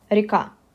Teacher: The stress falls on the last part of the word